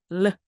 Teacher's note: 치경을 닿으면서 밀듯이 르 르 하는 L 발음